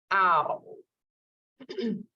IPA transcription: ɑʊ